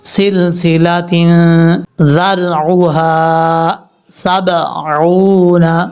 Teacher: کے بعد جو یا ہے اس کو لمبا کریں گے اور سین کے بعد جو لام ہے اس لام کو قلقلے سے بچانا ہے